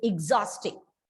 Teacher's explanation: that first syllable sound has been reduced to the e sound